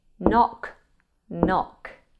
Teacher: knock starts with K and N. And so the K here is silent.